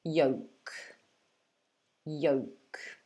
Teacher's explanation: so it's y, and then we have the O sound, yo, and the K. So there's no L.